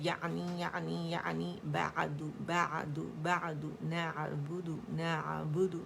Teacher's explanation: جھٹکا نہیں آئے گا, شدہ پیدا نہیں کریں گے اور نہ پوز آئے گا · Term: عین